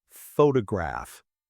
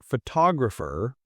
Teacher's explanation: We stress the first syllable, photograph. But for photographer, we stress the second, photographer.